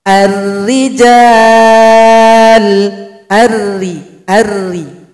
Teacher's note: Karena huruf ra tarkik, posisi dari bibir kita ini tidak ikut ke atas. Itu menandakan pangkal lidahnya tidak naik.